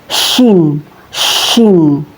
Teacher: Huruf syin ini keluar dari tengah lidah, tepatnya dari tengah-tengah lidah dan menempel dengan langit-langit mulut di atasnya. Syin syin. Ya, Teman-teman, cara melafalkannya seperti mengusir ayam syin syin ya.